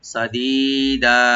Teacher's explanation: সিনটাকে open রাখবেন, দি একালে টানবেন, দা এখানে দুই জবরওয়ালা শব্দ যদি আমরা থেমে যাই এখানে মধ্যে আওয়াজ হয়ে যাবে, একালে টেনে আমরা এখানে থামবো, সাদীদা, এভাবে।